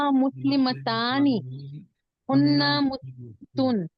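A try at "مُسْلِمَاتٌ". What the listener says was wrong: गलत ये मीम है, ये देखो ये मीम है, ये मीम की आवाज लंबी करने के लिए इसको अलीफ दिया है, तो मीम जबर माँ होता है, अलीफ लगाए तो माँ होता है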